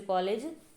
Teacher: इसके अलावा ये आगत स्वर है, ओ होता है जो, जैसे कॉलेज, तो ये वृत्ताकार में आएगा। इसके उच्चारण में भी होंठों से मतलब होंठों का वृत्त बनता है, तो ये भी आपने इसमें शामिल कर लेना, ठीक है।